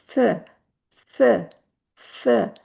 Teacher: अगला जो है स थोड़ी सी की साउंड आती है क्योंकि हम अपनी जुबान को थोड़ा बाहर निकाल के ऊपर के दांतों के जो मसूड़े नहीं बल्कि ऊपर के दांतों के जो किनारे हैं उनके साथ उसको टच करते हैं तो साउंड बड़ी सॉफ्ट सी बड़ी नरम सी थ थ थ जैसे थिंक में आता है थ थ थ ये इसकी साउंड है।